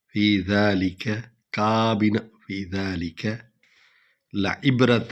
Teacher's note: ذال کو جو ہے ہم نے ڈھیلا پڑھنا ہے، نرم پڑھنا ہے، زے نہیں بنانا. فی ذالک کابنا، فی ذالک لعبرۃ لمن یخشی، لمن یخشی.